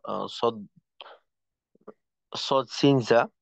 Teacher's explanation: সফিরের ক্ষেত্রে যেটা হয়, যে সফিরের হরফগুলা উচ্চারণের সময়, সফিরের হরফ 3টা: ফা, সদ, সদ, সিন, জা। সফিরের হরফ উচ্চারণের সময় তার আওয়াজের সাথে একটা অতিরিক্ত আওয়াজ বের হয়, যে চড়ুই পাখির আওয়াজের ন্যায়। সদের ক্ষেত্রে, সিনের ক্ষেত্রে বলা হয় যে পঙ্গপাল বা টিড্ডির আওয়াজের মতো আওয়াজ।